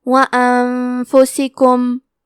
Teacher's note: کلمت انفسکم میں نون ساکن ہے پھر حرف الفا ہے، یہاں حکم ہے اخفاء تو ہم یہ حکم کو غنہ کے ساتھ ادا کریں گے